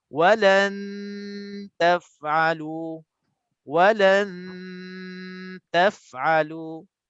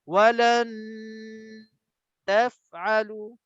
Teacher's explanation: Jadi dalam 2 harakat kita dengung untuk ni, untuk contoh ni, gigi kita, lidah kita dah sebut dah sentuh dah gigi. Lidah depan kita dah sentuh dah gigi kita untuk nak standby sebutkan ta. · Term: cara ikhfa